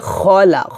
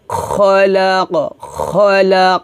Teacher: খলকের শেষ থেকে খটা উচ্চারণ করতে হবে মোটা করে। মালা মালা খলা খলা আমার সাথে বলেনমালা আউজুবি রববিল ফালাক রববিল